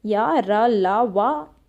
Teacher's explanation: ठीक है, यानी जब हम किसी व्यंजन का उच्चारण करते हैं और जो हमारी जीभ, तालु, दांत और होठ है ये एक दूसरे के पास तो आएंगी पर एक दूसरे को छुएंगी नहीं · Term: अंतस्थ व्यंजन